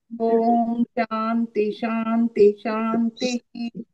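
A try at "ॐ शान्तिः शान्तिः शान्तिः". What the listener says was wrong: శాంతి శాంతి శాంతి అనకూడదు, శాంతి శాంతి శాంతి అనాలి. ఎందుకంటే శాంతి శాంతి శాంతి ఆ విసర్గ పలకాలి. శాంతి శాంతి అనలేకపోతే ఓం శాంతి శాంతి శాంతి అని పలకాలి.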